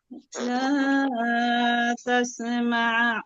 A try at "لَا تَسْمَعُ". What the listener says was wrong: টান নাই আপু, আইনে টানা যাবে না। তাসমাউ।